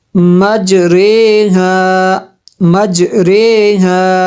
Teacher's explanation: میم جیم زبر مج، یہ دیکھیں انہوں نے لکھا ہوا ہے امالہ کے جس طرح کریں گے، میم جیم زبر مج مج، یہ دیکھیں جیم ساکن ہے اور یہ حروف قلقلہ ہے، اس پہ قلقلہ کرنا ہے۔ مج را امالہ والی رے، اس کو ری نہیں بلکہ رے پڑھیں گے۔ ہا الف زبر ہا، مج رے ہا مج رے ہا۔